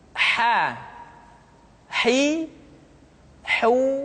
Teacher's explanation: huruf H dikeluarkan dari tengah-tengah tenggorokan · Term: huruf ha